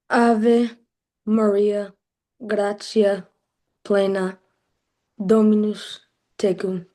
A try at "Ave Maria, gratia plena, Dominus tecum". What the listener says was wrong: Good. But make that a short O.